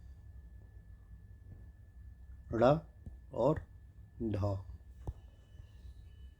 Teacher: ऐसे व्यंजन जिनके उच्चारण में जीभ पहले ऊपर उठकर जाएगी, मूर्धा को छुएगी और फिर झटके से नीचे को आएगी। · बात समझ में आई कि इसमें क्या होगा कि पहले हमारी जो जीभ है आप प्रोनंसिएशन करके देखिए। पहले हमारी जीभ ऊपर उठ के जाएगी। हमारा जो मूर्धा वाला पार्ट है ऊपर उसको छुएगी और फिर तेजी से नीचे की तरफ आएगी। तो ऐसे व्यंजनों को उत्क्षिप्त व्यंजन बोलते हैं।